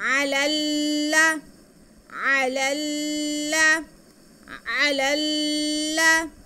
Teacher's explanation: पहले लाम को हम दूसरे लाम के साथ मिला के पढ़ेंगे क्योंकि वो मुशद्दद है। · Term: लाम मुशद्दद